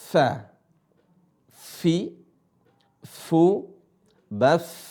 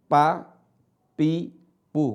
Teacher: Fa bukan bibir ketemu bibir. · Fa, cara bacanya adalah dua gigi seri atas ketemu bibir bawah. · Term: huruf fa